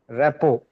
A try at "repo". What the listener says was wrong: Yes. RT, both the letters are silent. So you just say repo. Very good.